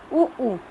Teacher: उ ऊ ओठ एकदम गोल हो गया